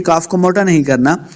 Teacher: کاف کو موٹا نہیں کریں گے، کاف کو لام کے ساتھ ملا کے پڑھنا ہے